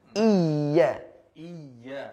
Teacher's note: di situ huruf ya berharakat tasydid di situ ada sifat yang bernama sifat nabr sifat nabr ya ya artinya tertekan ditekan di situ Iya iya